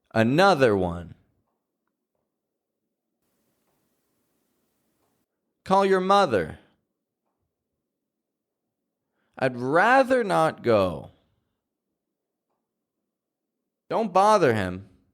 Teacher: have a th in the middle of the word word then you notice that there's a little bit more voice in these th words